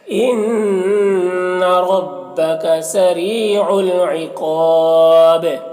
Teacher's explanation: عقاب میں قاف کو پر پڑھیں گے · با کا زیر وقف کی صورت میں سکون سے بدل جائے گا تو پھر با میں قلقلہ ہوگا اور پھر مد عارض وقفی بھی ہوگا، اس طرح سے پڑھیں